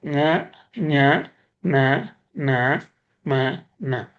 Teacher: மெல்லெழுத்து 6 எழுத்துக்களும் மூக்கின் வழி இசையாப்புற தோன்றும். அந்த ஆறும் வந்து மூக்கு கூடாக அது மூக்கின் இசையோட வரும். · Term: மூக்கொலி எழுத்து